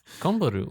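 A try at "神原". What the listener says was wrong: It's Kanbaru. Yeah, it's an A.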